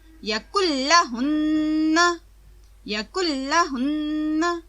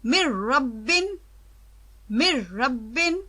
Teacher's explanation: اس نون کو لام یا را بنا کر اس میں مدغم کر دیا جاتا ہے۔ اس طرح لام یا را پر تشدید آ جاتی ہے اور نون پڑھنے کے لحاظ سے بالکل ختم ہو جاتا ہے۔ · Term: ادغام تام